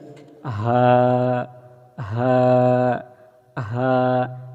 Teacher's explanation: এটা একদম যেমন হামজা হা, হামজা হা 1 নাম্বার মাখরাজ থেকে আসে হামজা হা, মানে একদম হলকের শুরু থেকে। হালকুন, হালকুন মানে গলা, একদম গলার শুরু থেকেই আসবে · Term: ছোট হা